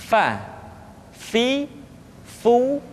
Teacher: diucapkan dengan menyentuhkan ujung dua gigi seri kita bagian atas dengan bibir bawah bagian dalam seperti kita mengucapkan huruf F di dalam huruf latin Fa fi